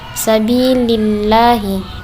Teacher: tarkik, sebab lam jalalah didahului huruf kasrah. Sabilillahi, tipis, bukan lillahi, lillahi.